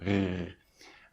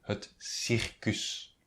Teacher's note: you have to put the tongue in your back up to pronounce the r